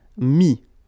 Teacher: Final S not pronounced, so mettre, to put, mis.